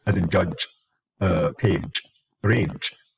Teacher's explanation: a combination of one stop that is released into uh into a fricative · take the d, combine it with the j, it becomes j, as in judge, page, range. So that is voiced palatal affricate.